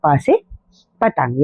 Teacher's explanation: ओठ को छू के निकलने वाली ध्वनि है प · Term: ओष्ठ